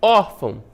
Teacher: Órfão, uma paroxítona, né? A penúltima sílaba tônica é o OR